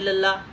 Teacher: ਜਦੋਂ ਇਹ ਦੋਨੋਂ ਬੋਲਦੇ ਆ ਤਾਂ ਜਿਹੜੀ ਆਵਾਜ਼ ਆ ਜੀਭ ਦੇ ਦੋਨੋਂ ਪਾਸਿਆਂ ਦੇ ਵਿੱਚੋਂ ਜਿਹੜੀ ਆ ਬਾਹਰ ਆਉਂਦੀ ਹੈ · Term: ਪਾਸੇਦਾਰ ਧੁਨੀਆਂ